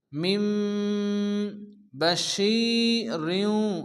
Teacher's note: মিম বাশিরিউ নুন সাকিনের পরে বা আসছে এখানে কি ইকলাব হবে নুনকে মিম দ্বারা পরিবর্তন করে এক আলিফ গুণ্য করে পড়তে হবে